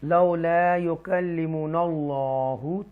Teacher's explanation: وَقَالَ الَّذِينَ لَا يَعْلَمُونَ لَوْ، یہاں پر واو مدہ ہے، یہاں پر حروف لین ہے، لَوْلَا يُكَلِّمُنَا اللَّهُ، تفخیم کے ساتھ اللہ پڑھیں گے، بولڈ پڑھیں گے، کیونکہ اللہ کے نام سے پہلے زبر آ رہی ہے